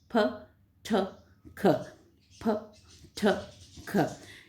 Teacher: ऐसा लगता है ना जैसे मुंह से हवा फूक जो है वो बाहर की तरफ आ रही, इसलिए इसको प्लोसिव नाम दिया गया।